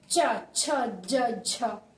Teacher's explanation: स्पर्श संघर्ष जिसमें ज्यादा जोर लगता है